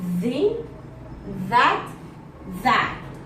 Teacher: According to voicing is voiced. Place of articulation is dental. I use my teeth to pronounce. According to manner of articulation is fricative, like in the, that, that.